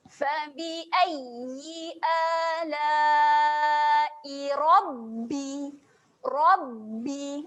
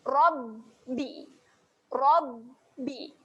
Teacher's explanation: Okay, seterusnya saya highlightkan pada tanda sabdu di atas huruf ba. Tahan pada makhraj huruf ba, rapatkan bibir.